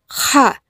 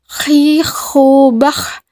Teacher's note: Huruf ini dikeluarkan dari tenggorokan yang terdekat dari rongga mulut kita. Ciri khasnya seperti suara orang yang sedang mendengkur. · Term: huruf Kha